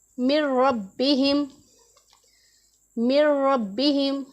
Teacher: रा और लाम में बग़ैर गुन्ना के हमने इदगाम करना है · रा के ऊपर ज़ोर देना है, लेकिन इतना ज़्यादा नहीं कि वो एक अलिफ के जितना लंबा हो जाए, उसे बिल्कुल भी लंबा नहीं करना। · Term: बग़ैर गुन्ना के इदगाम